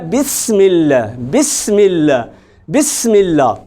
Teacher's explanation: سین اور صاد میں یہی فرق ہے، دونوں میں اگرچہ وہ زبان ایک جگہ پہ لگتی ہے، دونوں میں سیٹی کی نما آواز بھی آتی ہے، چونکہ ہوا ہم فل زور سے باہر نکالتے ہیں، منہ کی ہوا جو ہے، اور فرق صرف اتنا ہے کہ صاد میں آپ نے اس کو موٹا کر کے پڑھنا ہے، پر کر کے پڑھنا ہے۔